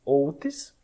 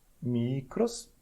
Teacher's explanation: outis com i breve. Então, enquanto que no micros, você tem aqui um i longo